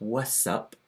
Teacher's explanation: So we don't get the T in what's anymore, it's just what's up.